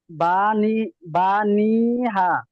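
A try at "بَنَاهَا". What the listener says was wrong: বানি হা কেন? বানি কেন? বানাহা নুন খরা যাবে না, টান হবে ভাই, বানাহা।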